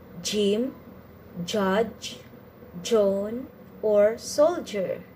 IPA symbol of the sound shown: dʒ